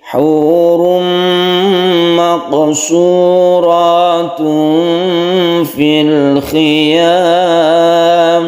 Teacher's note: Ada idgham bi gunnah kita panjangkan hurum kemudian maqsurat ada qalqalah sughra kita qalqalahkan kita pantulkan huruf qaf kemudian ikhfa kita samarkan maqsuratun kita samarkan kita panjangkan fil khiyam kha-nya hati-hati hurum maqsuratun fil khiyam.